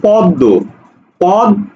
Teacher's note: দয়ের ডাবল উচ্চারণ হয়েছে, মানে দ্বিত্ব হয়েছে